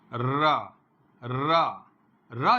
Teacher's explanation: र आप जिस समय रा का उच्चारण करेंगे तो लुंठित, लुंठित का मतलब पलट जाना, लौट जाना। र जैसे ही आप बोलते हैं जिह्वा का अग्रभाग र पलटता है